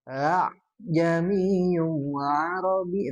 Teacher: tashil itu adalah A-nya kan ada dua ya, tapi disatukan.